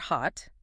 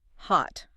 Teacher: If you're speaking with a standard American accent, the sound just ends suddenly. There's usually not a final burst of air like hot uh it's just hot. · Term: stopped T